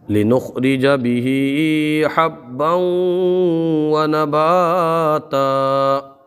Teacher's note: خا کو پر پڑھ لیں گے اور با کو جماؤ کے ساتھ پڑھیں گے. جب حروف قلقلہ مشدد ہوں تو انہیں جماؤ کے ساتھ پڑھا جاتا ہے.